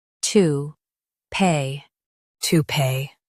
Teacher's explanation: Stress pee and keep tou light.